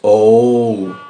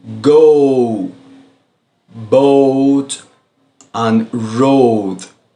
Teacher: it's a combination of an O and soft U. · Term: long vowels O